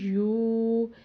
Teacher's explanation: پھر اسی طرح یا سیدھا پیش واو ساکن یو، ایک الف کے برابر اس کو کھینچ کے یا لمبا کر کے پڑھیں گے، کیونکہ حروف مدہ کا رول ہے کہ اگر پیش ہو اور آگے واو ساکن آ رہا ہو تو ہم اس کو ایک الف کے برابر لمبا یا کھینچ کے پڑھتے ہیں۔